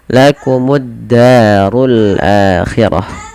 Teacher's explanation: Dan di sini langsung kita hukumi dengan alif lam syamsiyah, yang dimana alif lamnya diidghamkan, dimasukkan ke huruf dal, langsung ditekan di dalnya yang tasydid · Da ada mad tabi'i lagi, fathah bertemu dengan alif, 2 harakat panjang lafal da. Urunya tebal sebagaimana akhirah nanti ya, kedua-duanya tebal, ra tafkhim.